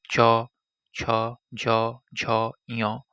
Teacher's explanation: এগুলো উচ্চারণের সময় জিহ্বা তালু স্পর্শ করে, তাই এগুলোকে তালব্য বর্ণ বলা হয়